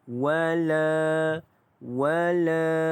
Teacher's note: La itu dibaca dengan panjangnya dua harakat kerana la itu adalah mad asli huruf alif.